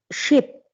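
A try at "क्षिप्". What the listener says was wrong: I maybe due to the internet compression, maybe I'm hearing only ship, but it should be kship. Kship. Kakara has to come.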